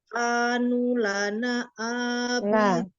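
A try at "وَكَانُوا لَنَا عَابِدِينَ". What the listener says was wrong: Nah, lana itu nanya panjang ya.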